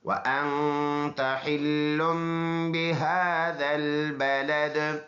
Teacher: ہا سینے سے ادا کریں گے